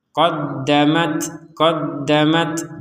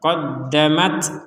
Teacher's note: Yang ketika kita membaca huruf Ta ini ada nafas yang keluar